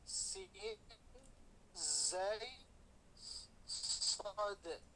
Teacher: huruf yang apabila diucapkan dia berdesis